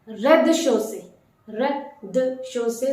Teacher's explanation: Notice the Z in the first syllable is completely omitted.